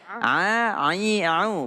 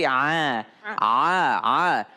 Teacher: A itu jangan sampai keluar dari hidung. Ya. Ai, au, bukan nga tapi a. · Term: huruf a